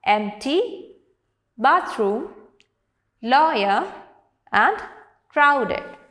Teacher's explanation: So the words with stress on the first syllable are empty, bathroom, lawyer and crowded.